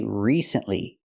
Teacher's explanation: we have to use a long e sound like green beans re recently not recently not the short I like this is we need